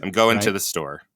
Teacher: We don't say to. Nobody says to. We say ta or te. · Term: lazy English